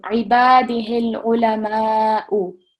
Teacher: So remembering this is Madh Kabir and we're going to prolong for at least 4 seconds.